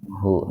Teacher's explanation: jangan dibaca panjang hu-nya karena sebelum huruf ha itu huruf mati, alifnya kan disukun.